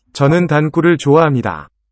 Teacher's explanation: The structure is root tal and a derivational suffix n. And the outcome is delete the L.